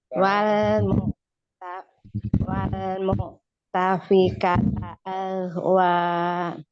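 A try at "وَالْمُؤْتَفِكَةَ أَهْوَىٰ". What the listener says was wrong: Ya, langsung ya. Ahnya langsung ahwa, jangan aja jangan dinaikkan. Ya, boleh disebutkan pertemuan 2 sukun juga. Terus kalau dilihat dari hukum lam ta'rifnya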